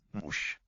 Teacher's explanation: So it's written ž, but it sounds like it's going to devoice in word final position to a mush sound